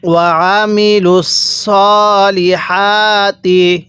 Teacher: আইনটা পড়ার সময় গলার মধ্যে চাপ দিয়ে পড়বে